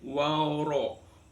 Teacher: Ini hukum bacaan tajwidnya yang pertama di waro. Waro ini roharakat fathah dibaca takhim